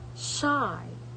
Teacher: The consonant sound is The sound sh is a post alveolar fricative. It is post alveolar because the tongue is positioned near the area just behind the alveolar ridge. It is a fricative because the air passes through a narrow opening, creating friction.